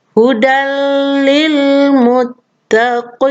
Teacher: fathatain ini dileburkan ke dalam huruf lam, maka menjadi hudal. Bukan lagi hudan. Ya, nun sukunnya sudah hilang. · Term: idgham bila guna